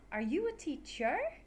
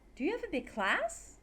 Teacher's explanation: Goes up. Yes, no questions end with rising intonation. Your voice gets higher at the end of the question.